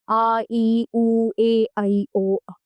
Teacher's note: दीर्घ स्वर, इनके उच्चारण में ह्रस्व स्वरों के उच्चारण से 2 गुना समय लगता है, ये संख्या में 7 है।